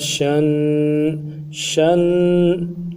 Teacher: شین کو پڑھتے ہوئے زبان کا بیچ بھی اٹھائیں گے تاکہ تفشی پورا ادا ہو۔